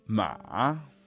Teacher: down and up ma ah slightly down and then way up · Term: third tone